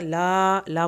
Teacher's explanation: ला पूरा पढ़ा जाएगा, अलिफ को थोड़ा खींच के पढ़ना है